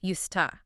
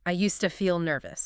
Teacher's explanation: Look at the phrase used to. Native speakers do not pronounce the D and the T separately. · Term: connected speech